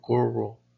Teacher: If you say the Spanish word corro, there are several repeated touches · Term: Spanish R